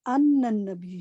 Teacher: نون پہ تشدید ہے نا، تو اس نون کو ضرور ادا کریں